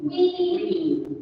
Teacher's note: Vowel number one is the front vowel. We use the front of the tongue to produce it.